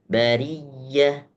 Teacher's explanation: Rnya bari itu tipis ri ya, jangan bari tapi bari.